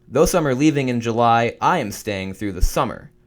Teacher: the emphasis is on the word July ending the subordinate clause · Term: emphasis by position